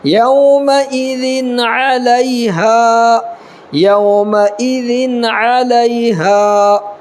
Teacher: اور لام یا زبر ل، یا ساکن سے پہلے لام پر زبر ہے تو یالین ہوگا، اور الف ساکن سے پہلے ہا کے اوپر زبر ہے تو الف مدہ ہوگا۔ اس کو نرمی یالین کو نرمی کے ساتھ ادا کرنا ہے، اور اس کو ایک الف کے برابر کھینچ کر کے پڑھنا ہے